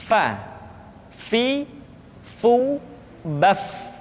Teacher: Diucapkan dengan menyentuhkan ujung dua gigi seri kita bagian atas dengan bibir bawah bagian dalam. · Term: huruf fa